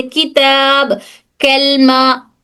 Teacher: काफ बोलते वक्त जुबान थोड़ा ऊपर उठती है जो साउंड को सॉफ्ट बना देती है।